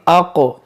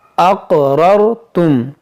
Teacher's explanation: काफ में कलकला करेंगे